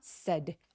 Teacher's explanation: 말했다의 said는 굉장히 빠르고 뾰족한 턱을 거의 벌리지 않는 소리예요. said요 정도예요.